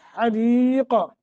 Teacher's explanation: را کو باریک، قاف کو موٹا، قلقلہ کریں گے